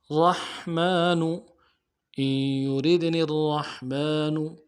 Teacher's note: را کو موٹا کریں گے، میم کے اوپر کھڑا زبر ہے، ایک الف دار میں کھینچیں گے